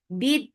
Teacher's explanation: Bid for kasra, give e sound attached with dal. Dal will get sifa of shidda. Bid, the sound will cut off very nicely. The, and then look, this is because of waqf, you are giving temporary sukoon here.